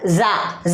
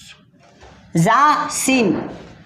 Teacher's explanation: इसी तरह से ज़ा, ज़ुबान की नोक दोनों दांतों से मिलकर ज़ा अदा होता है। और सीन भी, ज़ुबान की नोक और दोनों दांतों से मिलकर सीन अदा होता है